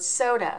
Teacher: in the word soda so soda has two syllables the so the first syllable ends in the long o sound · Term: open syllable